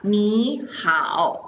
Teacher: Okay, so then when we say hi to someone, we are not reading 你好 because that is too difficult to pronounce. So we change the first word into second tone.